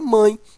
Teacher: nós temos ó a vogal e o esse E aí ó ele tem o som de i está ao lado de uma vogal e é fraco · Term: semivogal